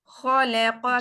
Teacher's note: खौ भी पुर है कॉफ भी पुर है जबकि लाम और काफ दोनों बारीक है